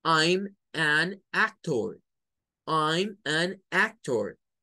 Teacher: Eso se debe a un fenómeno que en los idiomas se conoce como cacophony o cacofonía, que es cuando pega un sonido de vocal con otra vocal. Entonces, para evitar que suene vocal con vocal, se mete esta N en este caso